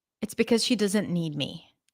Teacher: Intonation goes down at the end.